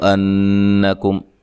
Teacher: انکم حمزہ کو تحقیق سے پڑھنا ہے، نون مشدد پہ غنہ ضروری ہے، نون کو لمبا نہیں کرنا، کاف کو باریک پڑھنا ہے، میم ساکن کا اظہار ہے